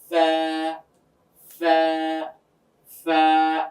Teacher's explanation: আমাদের উপরের দুই দাঁতের আগাটা গিয়ে নিচের ঠোঁটের মাঝ বরাবর লাগবে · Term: ফায়ের মাখরাজ